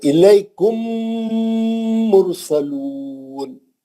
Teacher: مشدد میم سے ہی پڑھنا ہے، میم ساکن کو چھوڑ دینے کا ہے. اور یہ سوچنا میم ساکن میم مشدد کے اندر گھس گئی، ادغام کر گئی، سختی سے مل گئی. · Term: ادغام شفوی